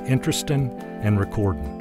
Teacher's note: Southerners use the N form of the variable ing more frequently.